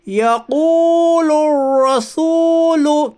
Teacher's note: واو ساکن سے پہلے پیش ہے، اس لیے واو مدہ ہوگا، واو مدہ کو ایک الف کے برابر کھینچ کر پڑھیے۔